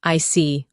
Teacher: When you show understanding with I see, your tone drops slightly to show calmness. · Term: falling tone